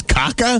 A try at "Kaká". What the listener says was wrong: Kaká. He's got the little accent on the second syllable.